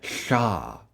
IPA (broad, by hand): ɬ